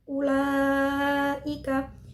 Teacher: huruf mad yang bertemu dengan Hamzah pada satu kalimat Cara Bacanya adalah dipanjangkan 2 Seteng Alif atau 5 harakat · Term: mad wajib muttasil